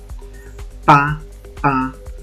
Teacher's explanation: actúan los dos labios y el aire sale con fuerza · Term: bilabial